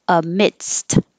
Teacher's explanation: you stop the airflow with your D, amid, and then relax your tongue so that you can make an S, and then push your tongue back up to stop the air for the T.